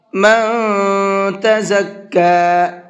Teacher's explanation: من کے نون کے اندر اخفا کریں گے اس لیے کہ نون ساکن کے بعد میں تا ہے اور تا اخفا کے حرفوں میں سے ہے۔